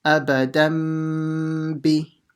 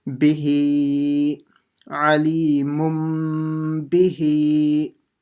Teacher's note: The n sound will change into a mim sound.